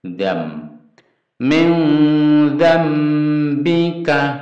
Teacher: Bunyi nun ini dan itu diganti mim menjadi zam. Zam. Min zambika, kafnya pendek lagi. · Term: iklab